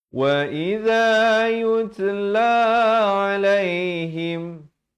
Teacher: Wa idza yutla alaihim, yut ada bunyi hamas, bunyi angin itu.